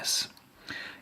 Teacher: the point of articulation happens between the tip of the tongue or the blade just behind and this hard bit of tissue here called the alveolar Ridge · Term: s sound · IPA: /s/